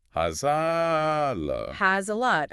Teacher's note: And again, the stop T on lot connects it smoothly.